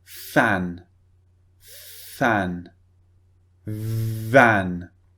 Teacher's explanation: they both use the bottom lip and the top teeth so the bottom lip goes against the top teeth and you push air out of your mouth